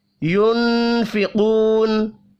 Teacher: نون ساکن کے بعد فا ہے، اخفاء حقیقی ہوگا، قاف پر پڑھا جائے گا، واو مدہ کو 1 الف کے برابر کھینچ کر پڑھیں گے، وقف کی صورت میں نون ساکن پڑھا جائے گا۔